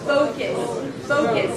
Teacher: So first of all, the primary stress is a long O, tho, and there is no U.